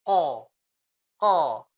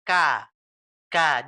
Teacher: Dia kalau ko di belakang, kalau K depanan dikit. Coba Ibu bisa rasakan antara ko dengan K.